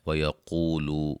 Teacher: قاف کو موٹا و مدہ دونوں جگہ